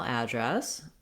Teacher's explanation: I want to have first syllable stress, the vowel.